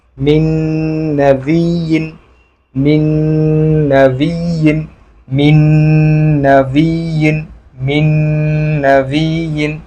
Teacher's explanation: ইদগামে বিল গুন্নার মধ্যে হতে হবে। এই নুন সাকিনকে এই নুনের সাথে গুন্না সহ মিলিয়ে পড়তে হবে।